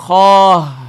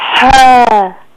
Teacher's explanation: خا آخر میں ہا کی آواز نہیں آنی چاہیے